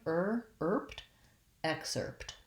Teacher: excerpt the s is kind of links those two syllables so i want to make sure i have my tight american r sound